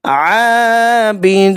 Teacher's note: عین کو 1 الف کے برابر کھینچنا ہے، حروف حلقی میں سے حلق سے ادا ہوگا